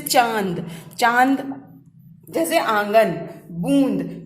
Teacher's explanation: अनुनासिक ध्वनियों का उच्चारण करते समय हवा नाक और मुंह दोनों से निकलती है